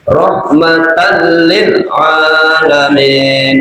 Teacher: Jadi fathafah tanwin ketemu lam langsung masuk tapi tanpa dengung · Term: idgham bila ghunah